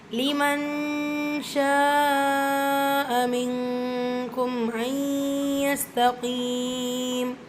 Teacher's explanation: நூன் சுக்குனுக்கு அப்புறமா letter யா இதுகாம் பில் குன்னா இணைச்சி குன்னா செஞ்சு ஓதணும்